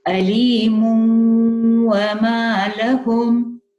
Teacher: after the meme tanween, you've got the wow, so it's half idgham, so it's partial merging.